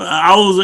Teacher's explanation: حمزہ کو صاف پڑھو کیونکہ آگے عین ہے، تو اعوذ، یہ حمزہ جو ہے یہ کہیں عین کے اندر تبدیل نہ ہو جائے